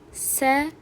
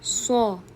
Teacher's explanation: S ingichka o'qiladi, so yo'g'on o'qiladi.